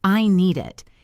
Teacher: If a word ends with a consonant sound like the letter D in need, and the next word starts with a vowel sound like the letter I in it, we do not stop between the words. We push the D onto the next word. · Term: consonant to vowel linking